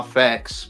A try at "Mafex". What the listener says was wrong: you're not doing it right. You're not getting in the nasal properly enough.